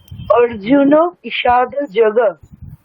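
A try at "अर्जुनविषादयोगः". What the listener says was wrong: বিসর্গের উচ্চারণটা কিছু অত আমাদের সমস্যার হওয়ার তো কথা না। ওখানে শেষের যে ব্যঞ্জন বর্ণ আছে তার সাথে বিসর্গ জরুর উচ্চারণ করবো, হকারের মতো উচ্চারণ করবো। তাহলে যোগঃ যোগঃ। ঠিক, তাহলে অর্জুন বিষাদ যোগঃ।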